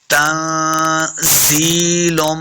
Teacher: नून साकिन के बाद जा हुरूफ़ इख्फा से भी है तो यहाँ पे हमने इख्फा का कायदा करना है, यानी गुना करेंगे। तंज़ीलुम, जा पे सख्ती करेंगे, जा जे या जी, या मद है, इसको दो हरका लम्हा करना है।